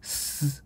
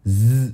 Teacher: 무기 무성 같은 경우에는 스 소리가 나게 됐고 이게 유성이 되면 즈 소리가 나게 되겠죠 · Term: 마찰음, 유성음